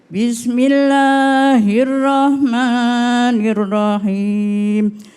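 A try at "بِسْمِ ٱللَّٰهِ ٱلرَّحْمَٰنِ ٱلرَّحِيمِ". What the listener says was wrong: Cuma tadi a'udzunya sama bismillahnya bisa diperbaiki lagi Bunda ya. Pakai ha. Rahmanirrahim.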